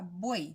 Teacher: Entonces acá es una palabra monosílaba, buey, no se separa. Hay 3 sonidos vocálicos, la U, la E y el sonido de I, aunque no esté gráficamente, pero tiene sonido de I. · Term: triptongo